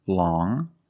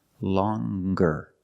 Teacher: First, we see long with the sound which is a nasal sound. Long. But then you have longer, where we have the hard G sound.